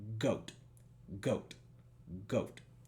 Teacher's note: en inglés es como la k es un bloqueo completo de la garganta